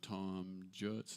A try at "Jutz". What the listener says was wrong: Utes, Utes. He's German.